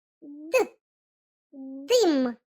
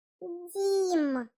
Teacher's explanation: Так, це звук д. Він твердий.